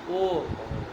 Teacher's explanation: एक क्षण का उच्चारण नहीं ना होता, इसलिए उसकी ह्रस्व संज्ञा है ही नहीं